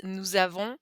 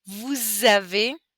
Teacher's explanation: So all of those, we actually pronounce the final S as a little z because all those words start with a vowel